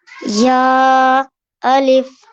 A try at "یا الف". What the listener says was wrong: اب یہاں پر آپ نے یا کو تھوڑا سا لمبا کر لیا تو اس کو تھوڑا کم لمبا کرنا ہے. یا الف.